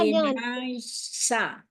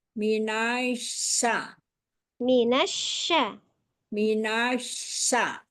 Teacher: Syin enggak tebal cuman ada suara tafasinnya aja.